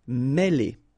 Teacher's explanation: Okay, remember, accent circumflexe here on the top of E, and it will give you the sound E, really open